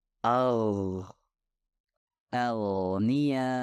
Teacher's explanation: gain dihasilkan ketika bagian belakang lidah diangkat ke atas dan hampir menyentuh langit-langit lunak